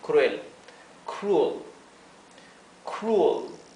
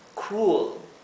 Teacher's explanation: la segunda U es como entre una U y una E